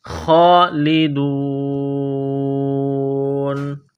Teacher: خا کو موٹا کرنا ہے، ایک الف کے لمٹ میں کھینچنا ہے